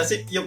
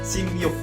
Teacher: Tapi kalau ini biep atau piepnya ketemu dengan vokal yang ada y-nya, ya, yo, yu, ye, akan menjadi miem. Sip yuk menjadi simyuk.